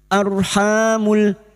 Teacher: ro sukun yang didahului fathah kita baca tafkim